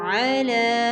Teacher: عین زبر الف عا، دا دو زے دن، عادن عین زبر آ لام کھڑی زبر لا علا عین کو حلق سے واضح کیا جائے گا لام کو ایک الف کے برابر کھینچیں گے